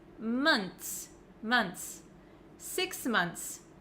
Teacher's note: It looks like there's just a TS at the end. I don't pronounce the H. Months. Make sure you don't pronounce the O in month like an O.